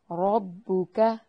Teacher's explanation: را کو موٹا ادا کرنا ہے، کاف کو باریک پڑھنا ہے